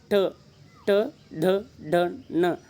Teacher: ನಾಲಿಗೆಯನ್ನು ಹಿಂದೆ ಹಿಂದೆ ಚಾಚಿ ಬಾಯಿಯ ಮೇಲ್ಭಾಗವನ್ನು ಸ್ಪರ್ಶಿಸಿದಾಗ ಉಚ್ಚಾರಗೊಳ್ಳುತ್ತವೆ · ನಾಲಿಗೆಯನ್ನು ಹಿಂದೆ ಎಳೆದುಕೊಂಡು ನಿಮ್ಮ ನಾಲಿಗೆಯು ಬಾಯಿಯ ಮೇಲ್ಭಾಗಕ್ಕೆ ಟಚ್ ಆದಾಗ ಮಾತ್ರ ಉತ್ಪತ್ತಿಯಾಗುತ್ತವೆ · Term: ಮೂರ್ಧನ್ಯ ಅಕ್ಷರಗಳು